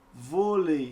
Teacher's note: porque eu tenho primeiro a vogal e depois eu tenho a semivogal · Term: ditongo decrescente